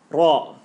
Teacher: Can you hear the rumble? You know, you go r, you go ra.